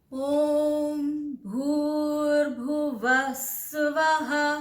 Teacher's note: इतना middle note में है, फिर वह नीचे है, स्वः ऊपर है। ठीक है, ओम भूर्भुवः स्वः, व में मैं नीचे गई, स्वः में ऊपर गई।